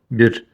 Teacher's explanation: Перед ним касра. Поэтому ро мягко читаем.